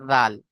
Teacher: জাল উচ্চারিত হয় জিভের আগা এবং সামনের উপরে দুই দাঁতের আগার সাথে লাগিয়ে জাল।